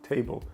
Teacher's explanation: перший склад й чіткий те і й а потім кажемо бл Але ми не кажемо бл А ми кажемо б і л між ними іде нейтральний звук